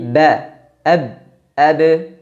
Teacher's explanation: karena pada pengucapan huruf ba nafas atau udaranya tertahan tidak dialirkan tidak dibaca ap ap pa pa tidak tapi ba ab ab · Jadi huruf ba keluar dari pertemuan antara bibir atas dengan bibir bawah. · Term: jahr